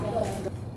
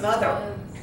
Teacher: Moth is unvoiced. We put ER on it, it becomes mother. Now it's voiced.